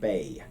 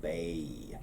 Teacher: You notice that it goes from a long A to a long E sound, bay. And that's something that a lot of people will do regardless of their accent, but with my awesome southern accent, I do it a little more than some people do. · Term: diphthongs